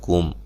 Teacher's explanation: یہاں میم ساکن کا اظہار ہے، غنہ نہیں کریں گے۔